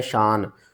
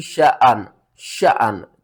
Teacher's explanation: الف کو جھٹکے کے ساتھ پڑھنا ہے